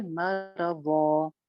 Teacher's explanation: دو زبر کی تنوین کے اوپر جب وقف کیا جاتا ہے تو ہمیشہ اس کو ایک الف لمبا کر کے پڑھا جاتا ہے